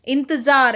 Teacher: इंतजार में सिर्फ नाक से आवाज आ रही है, तो इसमें हम बिंदु लगाएंगे इंतजार में।